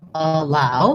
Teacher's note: So first for allow, we have second syllable stress, allow. So the allow part is long.